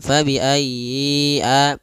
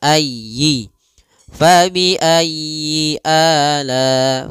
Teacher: jangan dipanjangkan ya, atau ayyi ala, tapi tekan ya-nya ayyi